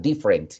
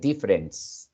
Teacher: when you say different the t sound becomes like an s sound